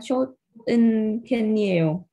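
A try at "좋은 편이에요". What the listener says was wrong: Chố ưng phiên, chứ không phải là chốt ưng phiên.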